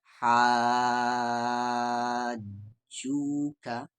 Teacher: یہاں دیکھیں الف مدہ ہے، الف مدہ کے بعد جیم ہے اور جیم پہ تشدید ہے، تو اسے ہم کھینچیں گے 5 سے 6 الف کے برابر